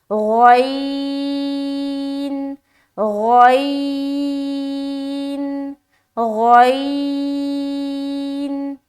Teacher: غین کو بھی منہ بھر کر بولنا ہے کیونکہ غین بھی موٹے حروف میں سے ہے